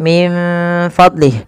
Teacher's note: Kita membacanya menyamarkan nunnya kepada huruf fa.